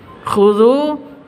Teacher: Khudhu, zu panjang 2 ketukan, ada waw mati diawali dengan dhamma.